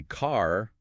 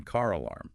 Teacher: a British person might say car without pronouncing the R, but they would pronounce it in car alarm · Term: non-roticity